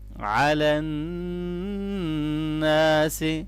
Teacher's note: نون مشدد پہ غنہ ہوگا اور الف مدہ کو لمبا کریں گے